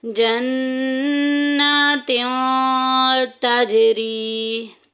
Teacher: ताजी में देखिए कलकला हो रहा है, आवाज़ गूंज के निकलेगी।